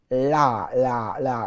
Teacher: There's la, la, la, a very pronounced la, flicking the tongue right forward. La, la, la, la, la, which again brings your tongue to life.